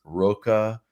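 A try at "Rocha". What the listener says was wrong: Oh, Hocha. Yeah, the R is spelled, it's pronounced H. Hocha.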